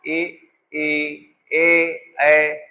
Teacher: इनमें होठ गोल नहीं हो रहे तो ये आवृत्तमुखी हैं